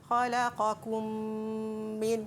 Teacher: memasukkan mim yang bertanda sukun ke dalam mim yang kedua yang berbaris berserta dengung. Kadar dengung sama juga iaitu 2 harakat. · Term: idgham mislain saghir